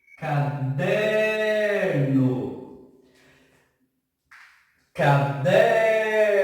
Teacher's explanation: Percebam que a nossa sílaba que mais se estica é o der. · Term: paroxítona